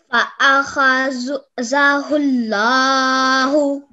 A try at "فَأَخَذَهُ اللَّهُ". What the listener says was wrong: Okay, make the lam a bit thicker. فَأَخَذَهُ اللَّهُ Then we have a alif mad, okay, and a vertical fatha here, which we prolonged for 2 seconds. Then we also have blank alifs, okay, here and here, which we dropped out of the pronunciation.